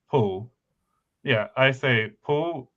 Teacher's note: when I say pull, I say pull with a vocalized L